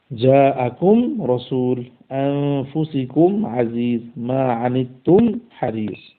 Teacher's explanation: গুন্না ছাড়া তার মাখরাজ থেকে দুই ঠোঁটকে মিলানোর দ্বারা আদায় করা হচ্ছে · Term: ইযহার